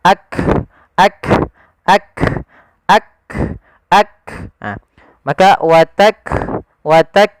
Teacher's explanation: ketika melafalkan huruf kaf yang perlu kita bunyikan dulu yang syiddahnya yaitu kita tahan suaranya baru kita alirkan nafasnya